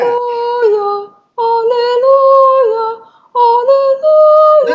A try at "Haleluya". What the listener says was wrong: Ya-nya jangan pendek. Haleluya. Itu ya saya tanya, ya-nya panjang atau pendek harusnya? Panjang, ya jangan dipendekin dong. Haleluya. Haleluya.